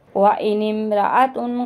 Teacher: व इनिम, ये अलिफ को नहीं पढ़ेंगे, नून को मीम के साथ मिलाएंगे